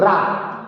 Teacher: बोलने में कंपन होता है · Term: प्र कंपित